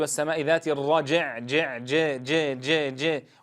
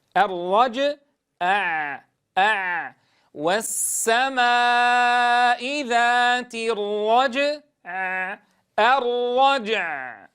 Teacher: نتنبه أيها الأحبة ألا نجعل الجيم مكسورة، فلا أقول والسماء ذات الرجع جع ج ج ج ج، وإنما تكون ساكنة الرج ثم أنطق عينا ساكنة مع إعطائها زمن البينية